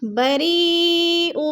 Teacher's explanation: حروف مدہ کے بعد حمزہ اسی کلمے میں ہے تو مد متصل 4 الفی مد ہے، 4 الف کے برابر ہم نے اس کو کھینچ کر پڑھنا ہے